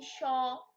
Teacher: ঘর্ষণজাত ব্যঞ্জন ধ্বনিগুলো হলো উচ্চারণের সময় বাকযন্ত্র দুটি খুব কাছাকাছি আসে, অর্থাৎ একসঙ্গে যুক্ত না হওয়ায় একটি প্রায় বন্ধ অবস্থায় সৃষ্টি হয়। ফলে ফুসফুসাগত বাতাস বাধা পায় ও সংকীর্ণ পথে বের হওয়ার সময় ঘর্ষণের সৃষ্টি হয় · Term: ঘর্ষণজাত ধ্বনি